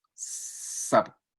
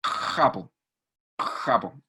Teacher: Es como una J, pero incluso más posteriorizada. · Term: fricativa faringea